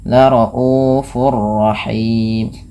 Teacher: Cara membacanya, tanwinnya masukkan kepada huruf ra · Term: idgham bila gunnah